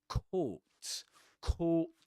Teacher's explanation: This is a long o sound you know with your lips rounded.